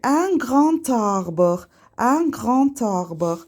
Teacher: Əgər söz tələffüs olunmayan samitlə bitirsə və ondan sonra sait səslə başlayan isim gələrsə, bu zaman tələffüz olunmayan samit tələffüz olunur. Məsələn, qığ sözü tələffüz olunacaq. Çünki ondan sonra saitlə başlayan söz gəlib və d t-ya çevriləcək. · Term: lezon